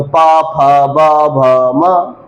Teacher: दोनों ओठ, एक ओठ से नहीं चलेगी बात, बात किससे चलेगी? दोनों ओठों से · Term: पवर्ग